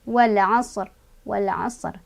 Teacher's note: Sodnya punya sifat sopir, artinya ada desisan ya.